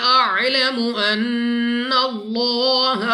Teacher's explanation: نون مشدد غنہ کر کے پڑھیں گے۔ لام آف اللہ سے پہلے حرف پر زبر، تو اس لام آف اللہ کو پر یعنی موٹا پڑھیں گے منہ اور آواز کو کھول کر۔